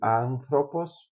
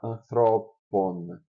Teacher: o acento muda aqui de anthropos para anthropon, genitivo plural